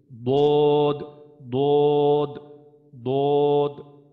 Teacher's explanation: এটা হচ্ছে আমাদের মোটা হরফ যখন উচ্চারণ করবো, তো দটটা হচ্ছে একটা মোটা হরফ, তো দদ যখন উচ্চারণ করবো তখন আমাদের জিহ্বার গোড়াটা উপরের দিকে উঠবে